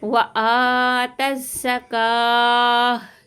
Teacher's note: تا کو زا کے ساتھ ملائیں گے، · گول تا کو ہاں میں بدل دیں گے